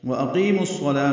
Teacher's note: واو ہونٹوں کی نا تمام گلائی سے ادا ہوگی، حمزہ اقصی حلق سے بالجہر ادا ہوگا۔ قی یا مدہ ہے، 2 حرکات لمبا ہے، میم کو الصلاة کے صاد سے ملائیں گے، وَأَقِيمُ الصَّلَاةَ بیچ میں واو الف لام نہیں پڑیں گے، یہ ادغام شمسی ہے۔